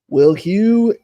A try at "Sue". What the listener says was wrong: That's Sue. The H is silent. H is silent.